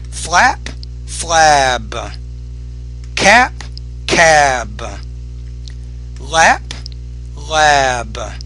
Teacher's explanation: So when it's at the ends of those words, you have to make the B. When the B's at the end, the vowel needs to be longer.